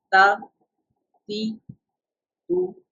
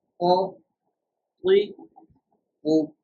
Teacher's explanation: ta in a thin tone and o in a thick tone